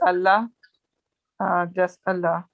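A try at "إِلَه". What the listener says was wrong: it's not Allah. It's ilah. It's we say ilahun, alif, lam, ha. Ilahun. So alif lam has been added to Allah and it becomes Allah,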